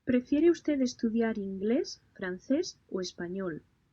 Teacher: When a question elicits an answer, there's a choice between two or more alternatives. The pitch rises with each choice and then falls with the final option. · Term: intonation